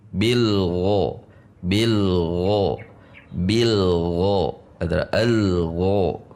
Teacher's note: ghoin hurufnya memiliki sifat isti'la, pangkal lidah tegang